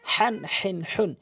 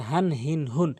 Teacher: বড় হাঁটি হচ্ছে হলকের মাঝখান থেকে চাপ দিয়ে এবং ছোট হাঁটি হলকের দ্বিতীয়টি মানে পরেরটি হলকের শুরু থেকে খুব সহজভাবে নরমালি উচ্চারণ